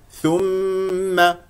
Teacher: لا تقل ثو ثو ثو ثم ميم ضمه الشفتين في الثاء والميم مشدده فيها غنه بمقدار حركتين